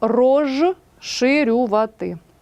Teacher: свистячі перед шиплячими стають також шиплячими наприклад пишемо розширювати а вимовляємо і транскрибуємо рожширювати так жи в